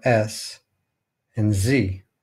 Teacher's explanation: The alveolar fricatives of English are S and Z.